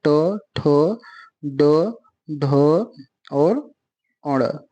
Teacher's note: मूर्धन्य के अंतर्गत कौन आएगा? ट वर्ग।